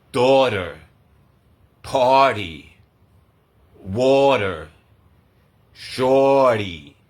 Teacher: the flap T sound it becomes a d when it's between two vowels